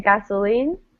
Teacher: I would say gasoline, stressing the last syllable, gasoline, but people all the time say gasoline. So both are fine, okay?